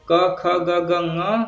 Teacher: क ख ग घ ङ, ह और विसर्ग का उच्चारण स्थान कंठ से होता है